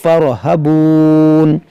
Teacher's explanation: اس را کو موٹا پڑھیں گے کیونکہ را ساکن سے پہلے زبر ہے، اور تو اس کو موٹا، اس الف کو نہیں پڑھیں گے، اس کو پڑھیں گے فَارْهَبُونَ۔